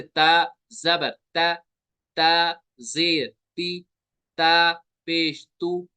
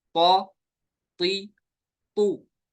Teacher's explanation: ता और तौ में फर्क क्या है, ता बारीक होता है, तौ पुर होता है, यानी ये हुरूफ मुस्तालिया है। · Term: पुर और बारीक का फर्क